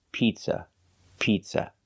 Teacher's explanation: The first vowel is a long E, like green beans. P, pizza. We don't use the short sound I, like milk.